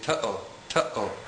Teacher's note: when the letter aleph is connected to a vowel in Hebrew, the letter aleph makes a glottal stop sound. This is similar to the sound that is made between the two syllables in the common English expression uh-oh.